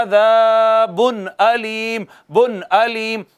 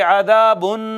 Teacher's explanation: عذابن، الف مدہ ہے، عذابن، نون تنوین، نون تنوین کے بعد حمزہ آ گیا، حمزہ ہا عین ہا غین خا، حروف اظہار میں سے ایک حرف آ گیا ہے، لہٰذا یہاں پر اخفا نہیں کریں گے، اظہار کریں گے